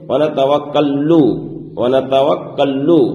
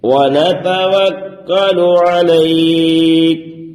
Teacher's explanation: یہاں پر آپ دیکھ رہے ہیں کہ کاف میں تشدید ہے اور تشدید والے حرف کو 2 مرتبہ پڑھا جاتا ہے